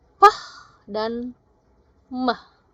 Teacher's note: Nah, ini diperjelas lagi yaitu penutupan begitu ya, atau menutup ya. Closing movement of both lips. Jadi harus menutup dulu bibirnya. Maka akan ada bunyi yang terproduce atau pronounce yaitu pah dan mah gitu ya. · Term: bilabial